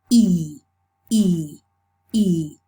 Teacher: So it's a front vowel. So it's close, front, and the lips. The lips assume a certain position for this. They are spread. E, E, E. They are spread.